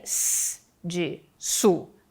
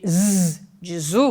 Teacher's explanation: Assim, o que diferencia s de su, de z de zu, por exemplo, é a vibração ou não das cordas vocais. S é não vozeado e z é vozeado.